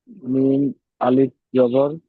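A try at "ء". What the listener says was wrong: ওটা আলিম নয়, ওটা হামজা। একটু ঝাটকা মতন হবে, হামজা আসলে একটু ঝাটকা মতন হয়। মা, একটু ঝাটকা মতন হবে।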